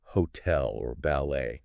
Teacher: There's that kind of lift at the end.